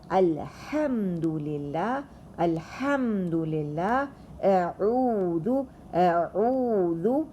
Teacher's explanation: These are the 2 letters which are pronounced from the middle of the throat, and if you put your finger on the middle of your throat, you would feel movement in ha and a, ha and a.